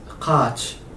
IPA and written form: qa:tʃ (قاچ)